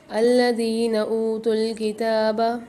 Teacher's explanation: ذال کے ساتھ یا ساکن ہے، الف کے ساتھ واو ساکن ہے، دونوں کو ایک ایک الف میں دار کھینچیں گے